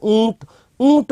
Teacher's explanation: ऊंट बोलने में नासिका में वाइब्रेशन सा होता है पंकज में नहीं होता क्योंकि पंकज में अनुस्वार है और ऊंट में चंद्र बिंदु आ